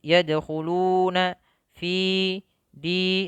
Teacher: Kemudian lafal sempurnakan dua harakat di fi yadkhuluna fi di. Ini mad tabi'i ya, mad yang kita baca dua harakat